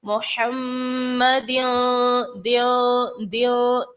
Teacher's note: गुन्ना भी करेंगे। किस तरह से, मोहम्मद दियो दियो, अपनी आवाज को नाक में लेकर जाएंगे